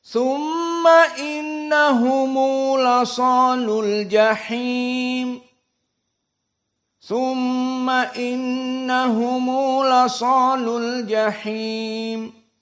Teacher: Dari 8 qurra Abu Ja'far serta Ibnu Katsir dibaca dengan silatul mim al-jama'.